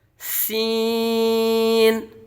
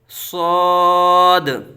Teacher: سین کو باریک اور صاد کو پر پڑھیں گے